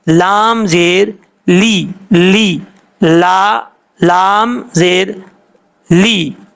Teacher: اب لام کے نیچے زیر ہے، اس کو لے ہی نہیں پڑھنا. لام زیر لے نہیں ہوتا، لام زیر لی، لی، لا، لام زیر لی.